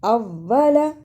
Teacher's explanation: شد کو ادا کرنے کا طریقہ، سختی کے ساتھ ذرا رک کر لیکن پڑھتے ہوئے درمیان میں آواز نہ ٹوٹے